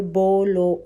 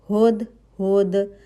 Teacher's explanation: آپ کے ہونٹ ہو پیش پڑھنے کے لیے پورے گول ہو رہے ہیں اور بیچ میں ہول ہے کہ آپ کی ایک انگلی چلی جائے گی، ٹھیک ہے۔